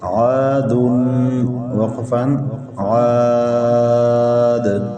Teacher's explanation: عاد وقفا عاد، کلمہ کے آخری حرف پر دو پیش تنوین ہے، وقف میں گرا دیں گے، کلمہ کا آخری ساکن ہو جائے گا۔ دال حروف قلقلہ میں سے ہے، وقف میں ساکن اس پر قلقلہ کیا۔ الف خالی سے پہلے زبر ہے، الف مدہ ہے، الف مدہ کے بعد والا حرف وقف میں ساکن اور مد عارض وقفی ہے، مد عارض وقفی کا مطلب وقف میں تین الف برابر کھینچ کر پڑھتے ہیں۔